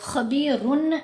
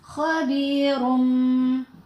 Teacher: آگے حرف با آ گیا تو اقلاب کریں گے، خبیرن نہیں پڑھنا، خبیرم۔ ساتھ غنہ بھی ہوگا